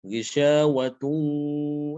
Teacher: Ghisyawatun, langsung ke wawu, masuk ke wawu ya. Disertai dengan gunnah atau dengung.